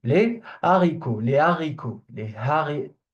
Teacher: It's one of the exceptions where the H is like aspirated · for les haricots verts, it will be a mistake to do la liaison